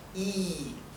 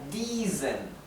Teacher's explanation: la combinación de vocales i e se pronuncia como una I larga bien abierta